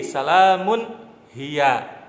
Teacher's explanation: mengucapkan huruf nun mati atau sukun atau tanwin dengan jelas tanpa dengung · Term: izhar halqi